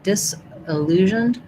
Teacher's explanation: I would say a lot of people would use a schwa here for this I. You might also hear an I, disillusioned or disillusioned.